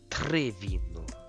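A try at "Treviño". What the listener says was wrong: Don't roll it. Don't roll it so much you don't go. Tari. Try to go Tari. Don't try to roll the R, just like Tari.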